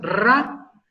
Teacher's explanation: es una pequeña vibración crea pero si tenemos raro es hay una vibración de más de una vez y entonces eso le llama una vibrante múltiple